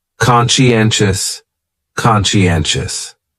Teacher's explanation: the stress is on that third syllable